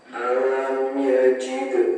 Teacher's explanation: huruf dal sukun di tengah-tengah kalimat ini merupakan bacaan qalqalah zuhro, jadi harus dibaca memantul